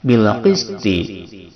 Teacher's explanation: bil alif lam komariah yang wajib idhar, lamnya dibaca dengan jelas